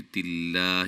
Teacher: لفظ اللہ کے لام کو باریک اس سے پہلے زیر ہے